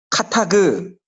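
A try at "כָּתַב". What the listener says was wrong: 그가 아니고 브. 그 카타브인데 아까 이제 나비에서 느빔이 사실 어근이 같잖아요.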